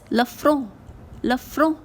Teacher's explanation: The sound of R is also very different from the R that we have in Hindi. It is not exactly the R sound. It is a little bit of H sound or R like this.